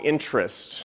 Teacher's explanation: students uh pronounce interest as interest okay as three syllables but american speakers do not pronounce this word in three syllables that they only pronounce this or into two syllables okay so